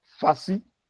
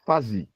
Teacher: In the first word, the second syllable begins with the voiceless fricative s, while in the second word, the second syllable begins with the voiced fricative z. So they constitute, these two words constitute a minimal pair in English, fussy and fuzzy.